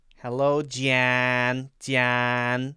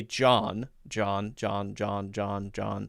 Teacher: There's definitely more nasally. There's a lot of air coming through the nose.